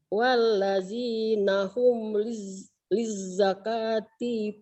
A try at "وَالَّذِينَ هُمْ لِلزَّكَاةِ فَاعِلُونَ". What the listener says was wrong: pendek, Ibu dari tadi manjangin yang pendek.